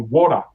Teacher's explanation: in American when they say T, water, is kind of R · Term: flappy R